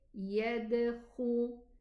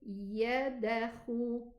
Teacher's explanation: This qalqala, okay, you just turbulate the sound in its exit. Don't open the makhraj.